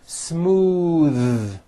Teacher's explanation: In this next one, remember that the word smooth is an exception and ends with a voiced TH sound